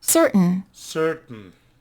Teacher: We stop the T and then we pronounce the N, no? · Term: glottal T